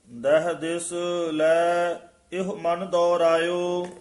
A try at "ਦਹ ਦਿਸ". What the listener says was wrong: ਦਹ ਦਿਸ ਕਸ ਕੇ ਨਹੀਂ ਬੋਲਣਾ।